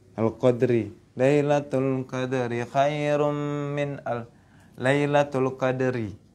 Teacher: Jadi ro-nya tuh ro tipis. Kenapa? Dia berharokat kasroh.